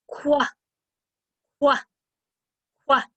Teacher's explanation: my tongue touches the very top of my mouth for just a moment when i first start making the sound and then it goes down to the bottom